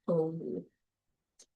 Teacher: the body of the tongue is in that back position and it's lower · So O is uh, one of the back vowels. It's a midback vowel. Um, it is tense. Oh, and it is rounded. As a matter of fact, often when we're trying to teach kids this, we will tell them to make their mouth look like an O.